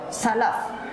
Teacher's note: ujung gigi atas bertemu dengan bibir bagian bawah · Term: makhrajnya